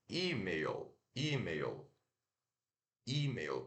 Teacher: Mas se pronuncia, ó, o I, que é a sílaba tônica. Ó, aqui nós temos o I de igreja, é aquele I longo, né?